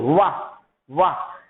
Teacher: आपकी जो होंठ होता है वह दांत में टच होता है